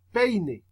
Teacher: empieza por una vocal abierta fuertes entonces presiona duro y termina con una vocal cerrada que son unos pasitos dentro de la misma por ejemplo peine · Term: diptongo